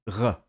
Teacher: now the voiced uvular fricative, r, is used in Parisian and Standard French, which is voiceless in some contexts, h.